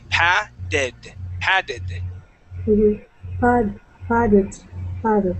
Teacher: Okay, now with the double T, okay, on this word, we can change that T to a D sound. And so instead of saying patted, we would say padded.